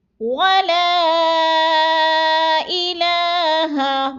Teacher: ولا کو تھوڑا سا کھینچنا ہے، مد ہے، 4 الفی مد ہے، 4 الف کے برابر ہم نے اس کو لمبا کرنا ہے